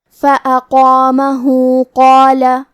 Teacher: ہم اپنی آواز 2 مد کے برابر لمبی کریں گے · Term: مد صلہ صغرا